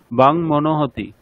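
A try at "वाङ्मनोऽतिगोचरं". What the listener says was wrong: না হতি নেই, হকার নেই ওখানে। বাং মনোতি।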